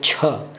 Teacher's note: महाप्राण व्यंजन उच्चारण में अधिक हवा निकलता है